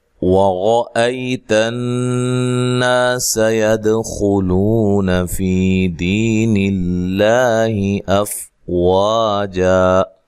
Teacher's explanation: را کو موٹا ادا کریں، را کے اوپر زبر ہے